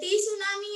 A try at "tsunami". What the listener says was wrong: टी सुनामी नहीं बोलते, सिर्फ सुनामी बोलते हैं। टी साइलेंट है। टू सुनामी भी नहीं बोलते और टी सुनामी भी नहीं बोलते।